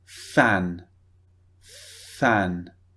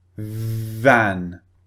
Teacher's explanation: So F is unvoiced, V is voiced. They both use the same part of the mouth, however.